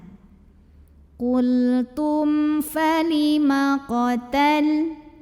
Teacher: mim sukun ini kita bunyikan dengan jelas bunyi m tidak ditahan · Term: izhar syafawi